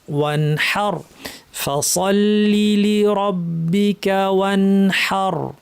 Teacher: হাটা সুন্দরভাবে ফ্যাস ফ্যাসে হায়ের আওয়াজটা করতে হবে